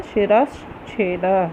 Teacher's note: शिरह में विसर्ग है, उसके बाद छ है, चवर्ग का वर्ण है तो विसर्ग के बाद च आया है, इसलिए विसर्ग को क्या होगा? तालव्य श हो जाएगा।